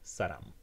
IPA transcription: saram